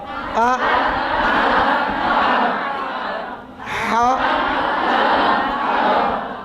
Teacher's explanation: حلق سے نکلے، آ موٹا نہیں ہے